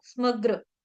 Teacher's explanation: जहांजहां पे ग्र ग्र ग्र ग्र आ रहा है वहां वहां पे आपने आघात लेना है।